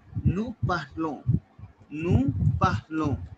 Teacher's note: ON sound is on and S would be silent.